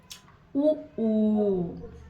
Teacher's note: ಉ ಅನ್ನುವಾಗ 2 ತುಟಿಗಳು ಕೂಡ್ತಾವೆ. ಅವಾಗ ಏನಾಗ್ತದೆ ಅಂದ್ರೆ ಅದಕ್ಕೆ ಇವಕ್ಕೆ ಏನಂತ ಹೇಳಿ ಕರಿತೀವಿ ಓಷ್ಠ್ಯಾಕ್ಷರಗಳು.